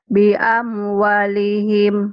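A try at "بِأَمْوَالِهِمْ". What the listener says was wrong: Wanya panjang. Bi amwalihim.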